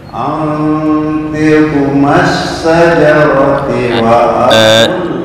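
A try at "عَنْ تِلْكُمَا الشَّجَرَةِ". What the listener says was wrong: Antilkuma jangan ada yang dipotong huruf-hurufnya. Maksudnya dipotong atau dikurangi apa istilah harokat ya. Kurang. Antilkumash syajarati.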